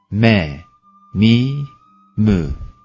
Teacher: Mim dudakların Biraz iç kısımlarını birbirlerine hafifçe kapamak suretiyle çıkar daima ince ve genizden gelen bir sesle okunur